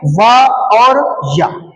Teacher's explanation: स्वर की अपेक्षा भी इसमें अल्प समय लगता है उच्चारण में, इसीलिए इनको कहते हैं अर्ध स्वर।